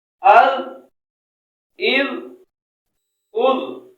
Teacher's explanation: اد زبان کی نوک اور اوپر والے دانتوں کا کنارہ۔ اد، اذ، اد نرمی سے لگائیں گے، سیٹی کی آواز نہیں آنے دیں گے